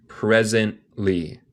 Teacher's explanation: a veces hacemos lo que se llama un glottal stop. Básicamente comemos el té.